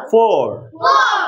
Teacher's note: উপরে দাঁত নিচের ঠোঁট